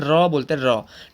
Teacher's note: इसके उच्चारण में जो जीव है वो तालु से बार बार टकराती है और लुढ़कती है, मतलब कि कंपन करती है, मतलब थरथराहट पैदा होती है जब हम रॉ बोलते हैं, रॉ। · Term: लुंठित व्यंजन